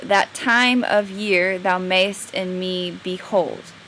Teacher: the stress on the second word of each pair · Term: iambic